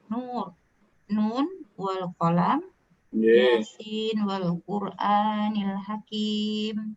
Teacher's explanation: jangan mengidghamkan nunnya nun dan nunnya yasin pada huruf waw sesudahnya. Kedua peristiwa tersebut dinamakan izhar mutlak.